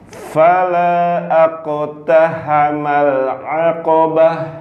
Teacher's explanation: Hamzah wasol di tengah tidak dianggap. Langsung masuk ke qaf sukun.